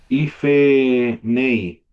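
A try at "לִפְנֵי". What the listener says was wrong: claro, el Cheva aquí no se pronunciaría. Leaf name, Por la gire que es corta aquí. Si fuera Hirek Yot sería larga.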